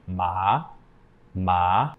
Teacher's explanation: the second tone is rising so you start lower in your voice and you go up up so with the word ma again that'd be ma ma the · What I mean by flat is your pitch shouldn't change when you're using this tone. The second tone is rising. So you start lower in your voice and you go up, up.